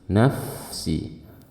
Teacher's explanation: fa-nya ditahan, suaranya dialirkan